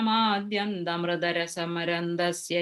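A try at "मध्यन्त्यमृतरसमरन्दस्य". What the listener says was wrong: That fourth line there, the Madhyantyamrita, ya. You said Madhyant Amrita, I heard. It is kind of ya. Yamrita, because Madhyanti plus a becomes ya there.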